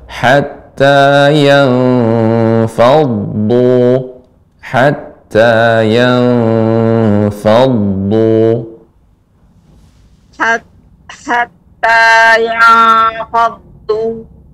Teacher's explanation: dhad sifatnya isti'la, tebal, dan namun dia mengalir, sifatnya mengalir